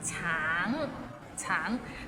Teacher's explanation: Tang, it means orange, but some people might find it difficult because the end has a little ng, so it's a bit of nasal sound